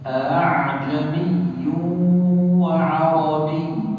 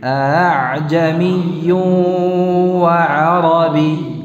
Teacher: Jadi membacanya kita dengan mengucapkan antara hamzah tahqiq dan alif. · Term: hamzah tashil